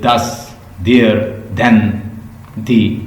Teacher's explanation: These sounds are formed with the tongue tips behind the upper front teeth. अपर जो front teeth है इसके जो behind पे, इसको कहते हैं डेंटल साउंड।